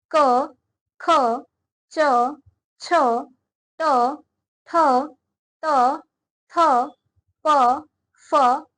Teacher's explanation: जिन वर्णों के उच्चारण में प्राण वायु में प्रकंपन नहीं होती है उन्हें अघोष वर्ण कहते हैं।